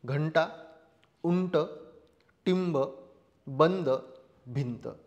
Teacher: ज्यावेळेस आपण अनुस्वार उच्चारतो तर नाकातन हवा जास्त बाहेर पडते आणि तोंडातन कमी